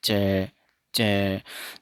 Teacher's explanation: जब जीभ टकराएगी और टकराने के बाद में जो जीभ की पोजीशन है वो हार्ड पैलेट की तरफ चली जाएगी। जैसे च च, जब आप च का उच्चारण करोगे तो जीभ हार्ड पैलेट पे टकरा के ऊपर की तरफ उठ जाएगी।